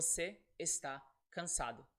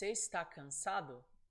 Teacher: it's an affirmation I'm saying you're tired before si esta cansado as you see no question intonation it's direct not a question